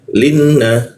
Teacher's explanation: Ee huruf la na posisinya sama di sini menggunakan ujung lidah linna nunnya bertasjid warna pink artinya kita tahan dua ketukan